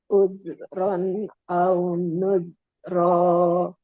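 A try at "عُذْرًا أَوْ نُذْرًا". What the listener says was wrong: Yang pertama ada sedikit pantulan. Jangan pantul, mengalir, tapi jangan ada zatnya. Ron.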